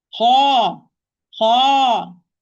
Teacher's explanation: letter with fatha followed by natural mad alif has more time, more duration so the echo will fill the mouth more than when I pronounce مفخم letter only with fatha. · ضخم letter with fatha followed by natural mad alif, the highest level of the tafkhim.